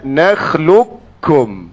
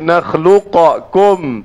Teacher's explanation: qaf dengan kaf ni berdekatan pada makhraj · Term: idgham